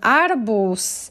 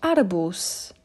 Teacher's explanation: notice that even though the last letter is z i pronounce it like letters s